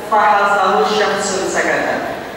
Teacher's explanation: Ini adalah huruf-huruf yang harus ada udara keluar sedikit dari mulut kita.